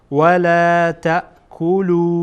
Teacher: مد منفصل هست، به اندازه 3 حرف یا 3 حرکت طولانی میکنیم